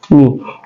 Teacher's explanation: Mi adalah asyafatain, keluar di 2 bibir, dan dia juga adalah al-khaisun, keluar di hidung.